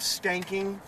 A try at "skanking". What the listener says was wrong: Stanking? Oh, skanking. You said stanking, like a stinky butt.